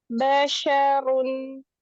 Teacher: Shinnya pakai tengah lidah.